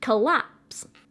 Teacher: Iamb is a 2 syllable one, and it's more like duh, or duh. So the stress is on the second syllable, like in collapse.